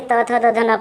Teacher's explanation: दंत दांतों को सटा करके त थ द ध न पढ़ा जाता है।